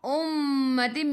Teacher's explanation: mim ada sabdu tekan ke dalam mim dan dengung 2 harakat wajibul gunnah.